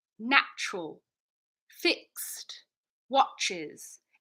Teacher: natural fixed watches a British accent might say natural fixed watches it's just ever so slight hesitation on completing those consonant clusters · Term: consonant pause